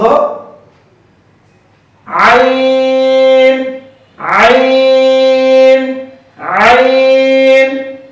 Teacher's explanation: এরপর হরফটি হলো আইন কণ্ঠনালীর মধ্যখান থেকে আইন হরফটি উচ্চারিত হয়, এটা হলো মাখরাজ। আইন হরফটি পড়ার সময় আওয়াজ নরম হবে, চিকন হবে, নিচের দিকে দাবিত, বাতাস বন্ধ।